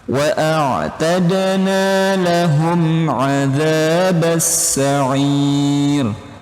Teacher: Ini hukumnya idhar syafawi teman-teman. Mim sukun bertemu huruf ain. Idhar syafawi dibaca jelas di bibir.